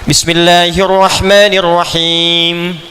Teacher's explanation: Itu selain diucapkan di bibir, ya, dari lisan ke bibir mesti ada dengung ke hidung sedikit.